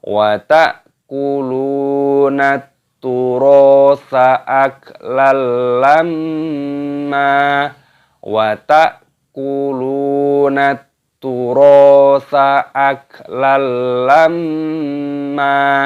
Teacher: Ada hamzah sukun dibaca ta'kuluna, lamnya panjangkan, wawu sukun matobi'i 2 ketukan. Wa ta'kulunat, ada alif lam syamsiyah, taknya berharokat tasdid, ini dimasukkan, diidghamkan.